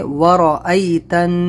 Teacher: را زبر را، تو را کو موٹا پڑھیں گے۔ ورأیتن غنہ کریں گے، یہاں پر نون کے اوپر تشدید ہے۔